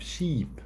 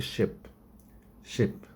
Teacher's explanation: when i pronounce the long vowel i hold the the pronunciation a little bit longer